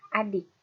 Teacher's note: near close atau sedikit tertutup. Pada bagian lidah depan terdapat bunyi I. Contoh katanya pada kata adik.